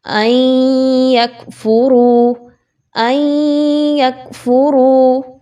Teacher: آپ نے یہاں پہ حمزہ کو ڈائریکٹلی یا کے ساتھ ملانا ہے، درمیان سے نون کو آپ نے نہیں پڑھنا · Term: ادغام مع الغنہ